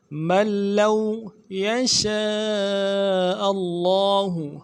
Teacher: شین حروف تفشی میں سے واضح کریں گے ، شین کے بعد الف مدہ ہے، مد عارض ہے یا · نہیں پڑھیں گے، لام کے اوپر تشدید زور دیں گے، اور لام کو واو کے ساتھ ملانا ہے، واو لین ہے بغیر کھینچے پڑھیں گے